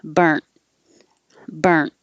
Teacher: burnt with a t and burned with a d will pretty much sound the same · you're not going to hear the D or the T. The tongue stops and holds it right behind the top teeth.